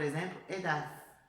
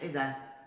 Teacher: Agora, os madrilenhos, eles fazem sim um sonzinho. É como se fosse um pequeno som de S aí no final dessas palavras. Isso acontece, é um fenômeno que acontece principalmente em Madrid, tá?